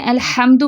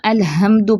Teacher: الحمد میں ہا جو ہے وہ وسط الحلق سے ادا ہونے والا ہے لیکن آپ اس کو اقصی الحلق سے ادا کر دیں